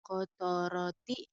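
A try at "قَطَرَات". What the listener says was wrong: Itu kan tak. bukan koto. Itu kan tak bukan tok.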